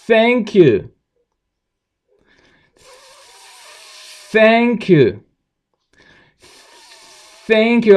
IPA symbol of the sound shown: θ